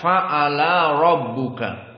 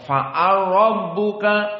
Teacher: Lam masuk kepada ra. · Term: Idgham